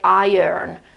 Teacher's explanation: imagine a little schwa here in the middle between I and R